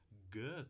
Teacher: G também é oclusiva, só que agora o ponto de articulação é a parte posterior da língua encostando no véu palatino. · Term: oclusiva velar sonora